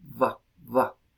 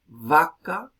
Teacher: el empleo de la fricativa labiodental sonora, va, como fonema propio